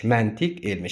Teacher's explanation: Yəni burda q öz məxrəcində qalacaq, dəyişməyəcək.